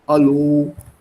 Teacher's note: since the man speaks from the chest area there's a booming sound